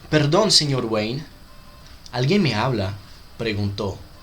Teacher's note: Espero que vocês possam notar a letra O e a letra E bem fechada